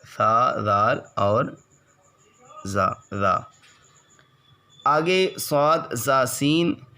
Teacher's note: زبان کی نوک اور دونوں دانتوں کے اندرونی کنارے سے ادا ہوتے ہیں